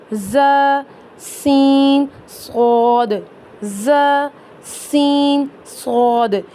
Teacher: इनको अदा करते वक्त हल्की सी सीटी की आवाज निकलती है · یعنی ان کو ادا کرتے وقت ہلکی سی سیٹی کی آواز نکلتی ہے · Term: सीटी वाले हरूफ, سیٹی والے حروف